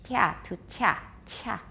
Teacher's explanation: You can hear some frication there, affrication. You can see that clearly on a spectrogram.